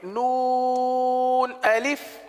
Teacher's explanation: نون کو 3 الف تک کھینچ کے پڑھیں گے